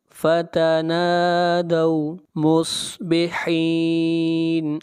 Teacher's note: صاد کو موٹا پڑھیں گے، صاد حروف مستعلیہ میں سے ہے، مصبحین، یہاں پر مد عارض وقفی ہے۔